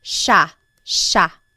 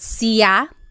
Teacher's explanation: There are some regions in the Philippines that might pronounce it sa but for the most part in the central Luzon Tagalog speaking areas it's pronounced sha